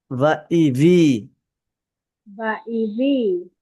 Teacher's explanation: দুই ঠোঁট একত্রে হবে না নিচ উপরের দাঁতের আগা নিচের ঠোঁটের ভিজা অংশ এবার লাগবে